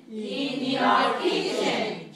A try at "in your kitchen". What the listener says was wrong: Okay, don't say your. Say in your very small. In your kitchen. Watch my mouth. Watch my mouth. I don't say your. Say your. In your. Very weak. In your kitchen. Small, small, big, small.